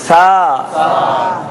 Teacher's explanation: زبان کی نوک اور جو یہ دانتوں کی نوک ہے اس کو لگائیں گے. سا میں سیٹی نہیں بجے گی.